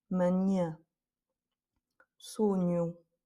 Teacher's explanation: Là, avec un N, ça ressemble un peu à notre GN à nous, comme dans magnifique. C'est un peu la même chose, c'est juste un petit peu plus nasal qu'en français